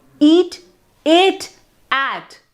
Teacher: the degree of the openness of its vowel falls between those of eat and at. So there is a continuous increase in mouth openness as you go from one vowel to another. These degrees distinguish high, mid and low vowels.